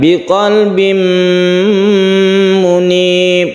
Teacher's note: tanwin bertemu dengan mim, ini disebut idgham biguna, kita dengungkan.